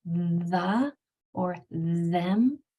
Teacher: When you just put your tongue between your teeth on those words, it vibrates and tickles a little bit. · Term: voiced